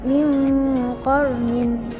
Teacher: nun mati bertemu dengan qaf, termasuk hukum bacaan ikhfa hakiki. Cara membacanya dengan disamarkan.